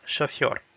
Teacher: Donc encore une fois, on note que le O, l'accent n'est pas sur le O, donc ça se prononce comme un A